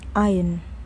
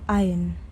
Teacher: The R is completely silent in standard English.